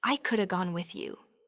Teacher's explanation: These are reductions of could have, would have, and should have. The have completely reduces, often just to a soft sound, or even disappears entirely. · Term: Coulda, woulda, shoulda